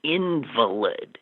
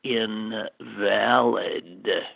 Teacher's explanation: Just change the stress onto the second syllable from the first.